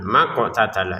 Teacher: qof sukunnya kita baca dengan pantulan